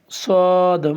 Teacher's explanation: মুখটা একটু গোল হবে উচ্চারণ করার সময়, সদ।